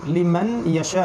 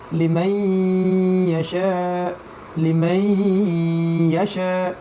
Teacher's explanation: নুন সাকিনের পরে ইয়া চলে আসার কারণে আমরা এখানে ঈদগাম করে পড়বো এবং গুণনাও করবো। লিমান ইয়াশা না পড়ে লিমাই ইয়াশা, লিমাই ইয়াশা।